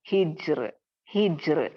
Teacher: را ساکن سے پہلے جیم ساکن ہے، جیم ساکن سے پہلے ہا ساکن میں زیر ہے، تو زیر آنے کی وجہ سے میں یہاں پہ را کو کیا کروں گی، باریک پڑھوں گی، ترقیق پڑھوں گی، تفخیم نہیں پڑھوں گی.